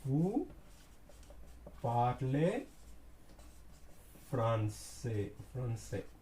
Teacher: Intonation means we are raising our tone at the end of the word. It makes a question.